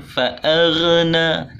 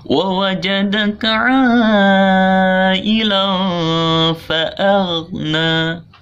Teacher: Tidak boleh ada pantulan fa'aghna, tidak boleh. Tidak boleh ada pantulan karena bukan huruf qalqalah ya. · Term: huruf ghain